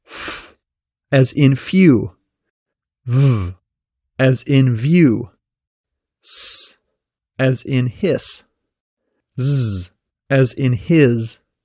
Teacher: All these sounds are made by partially blocking the air moving through your mouth which creates an audible friction. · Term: fricative consonants